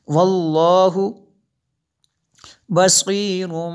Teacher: میں نے غنہ کیا کیونکہ تنوین کے بعد با ہے تو یہاں پہ انقلاب ہوگا، اس لیے یہاں پہ غنہ کریں گے.